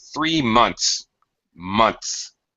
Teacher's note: You really can't even hear the TH.